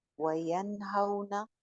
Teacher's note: इजहार हो गया क्योंकि नून के बाद हा थी